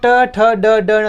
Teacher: जब हम बोलते हैं अपनी जीव अपने आप मुर्दा के ऊपर टकराती है। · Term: ट वर्ग